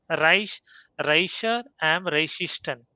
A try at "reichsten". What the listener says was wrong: Why are you saying Reichsten? There is no E between high and S.